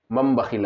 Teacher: تنوین یا نون ساکن کے بعد با آئے تو، تنوین یا نون ساکن کے بعد با آئے تو نون کو میم سے بدل کر گنہ اور اخفا کے ساتھ پڑھیں گے۔ نون کو میم سے بدل لینا ہے اور پھر اس کو گنہ اور اخفا کے ساتھ پڑھیں گے، اس کو اقلاب کہتے ہیں۔